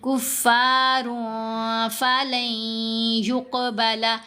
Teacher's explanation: یہ نون کی آواز جو ہے یہ یا کے اندر ہی مرج ہو جائے گی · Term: یرملون کا ادغام